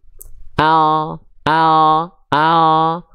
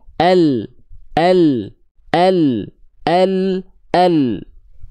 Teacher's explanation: huruf lam dilafalkan dari sisi lidah depan kanan dan yang kiri keduanya menyusur sampai ke ujung lidah di sentuhkan ke langit-langit bagian depan ilustrasinya ilustrasi pergerakannya Oke kita